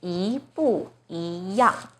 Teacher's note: So 不 here should be the 4th tone, 不一样. Now the first E is followed by a 4th tone 不, So the first E itself should be the second tone.